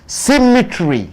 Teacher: Symmetry, 3 syllable. You are stressing on the first syllable.